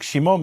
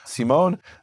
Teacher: Greek doesn't have a sh sound so it becomes a s